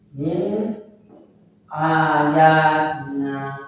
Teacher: nun sukun bertemu dengan hamzah maka dibaca jelas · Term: izhar